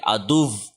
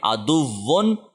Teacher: واو کے اوپر جب تشدید آ گئی تو یہاں پہ جب ہم وقف کریں گے تو ہم اس کو سختی دکھائیں گے. ادو، وی کی ساؤنڈ آئے گی.